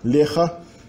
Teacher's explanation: in leha we have an absorption of the ne, of the n, by the stem consonant ha. Instead of lechna, we have leha.